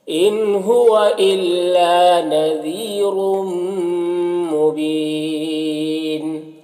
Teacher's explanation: را کو اوپر 2 پیش کی تنوین ہے، را کو پر پڑھیں گے، اور تنوین کے بعد میم ہے حروف یومن میں سے تو تنوین کو میم سے ملا کر غنہ کے ساتھ پڑھیں گے، اس کو ادغام ناقص کہتے ہیں۔ مبین میں وقفی کی صورت میں مد عارض وقفی ہوگا · الا میں الف مدہ ہے، ایک الف کے برابر کھینچیں گے